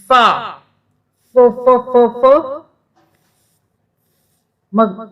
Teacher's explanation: اوپر کے دانت بھی استعمال ہوں گے اور ہونٹ استعمال ہوں گے